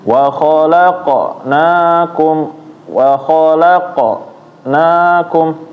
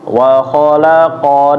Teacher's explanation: jadi kayak membaca qa tapi setengah harokat aja, pendek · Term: qalqalah sugro